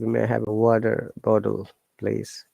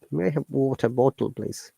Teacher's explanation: the t sounds like d because after t there's a vowel sound